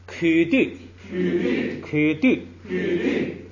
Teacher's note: 后边的曲要变成不送气